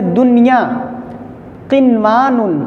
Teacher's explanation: دیکھیے دنیا نون ساکن کے بعد حروف المرون میں سے یا ہے لیکن ایک ہی کلمے میں، اس لیے یہاں پہ ادغام نہیں ہو رہا ہے۔ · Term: اظہار مطلق